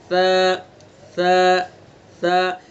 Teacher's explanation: پہلے پڑھیں کہ مخرج اس کا یہ ہے، مثلا سا ہے، سا کا مخرج زبان کی نوک ثنا علیہ کا کنارہ